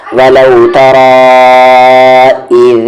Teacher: مد کے سمبل کے بعد حمزہ ہے دوسرے ورڈ میں, تو یہاں پر ہم اسے 3 سے 4 حرکت کے ایکول کھینچیں گے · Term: مد منفصل